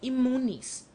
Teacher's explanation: the letter N, which is required by strict adherance to fact, is forced by the sound of the M which follows to change into another M.